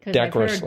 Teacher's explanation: I think the emphasis comes on that first syllable